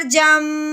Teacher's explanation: جیم کو میم کے ساتھ ملاتے ہوئے ہم نے منہ بند کر لینا ہے اور ناک میں سے آواز نکالنی ہے ایک الف کے برابر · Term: میم کا غنہ